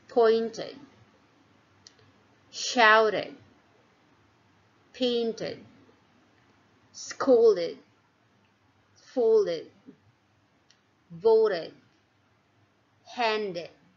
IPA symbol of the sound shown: id